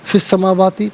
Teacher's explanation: فا کے نیچے زیر ہے، اسے السماواتی کی سین کے ساتھ ملائیں گے